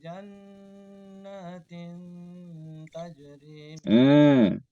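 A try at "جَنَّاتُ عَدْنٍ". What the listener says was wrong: Hati-hati, bukan jannatin tapi jannatu adnin.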